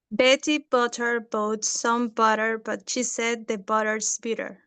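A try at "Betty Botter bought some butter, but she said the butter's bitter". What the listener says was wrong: Beautiful, great pronunciation. Exactly.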